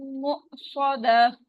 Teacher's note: गोलता जो है रुकते वक्त हाँ में बदल जाएगी